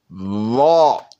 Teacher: Va. Look at the tongue. Va. Tongue. Va. It went up to the teeth.